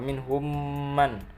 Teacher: Selanjutnya mim, wa minhum man, mim mati bertemu dengan ma, idgham mimi atau idgham mislain, yang dibaca masuk dengan dengung dan ditahan sampai 3 harokat